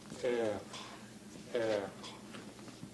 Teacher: It's a K that's pronounced farther back in the mouth. Later on I'll go on, well, I could tell you now, it's what a linguist would call a uvular stop.